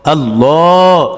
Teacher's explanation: আল্লাহ শব্দের লামের পূর্বে কি হয়েছে জবর এসেছে এই কারণে কি হয়েছে লাম মোটা হয়েছে